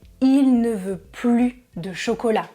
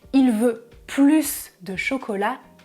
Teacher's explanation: Il veut plus de chocolat, il veut encore du chocolat, il veut davantage de chocolat. Mais si vous ne prononcez pas le S du mot plus, alors votre phrase est négative